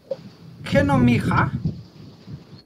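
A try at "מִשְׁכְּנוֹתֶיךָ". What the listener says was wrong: That's a tav, kinotecha. And you'll note something very interesting. We have two shvas inside the word. The first one closes for us, and the second one is vocalized.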